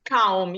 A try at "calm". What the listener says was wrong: Да, тому що calm звучить як приходити, а буде calm. Там літера L є. L. Calm.